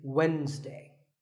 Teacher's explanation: It's Wednesday. The D is silent.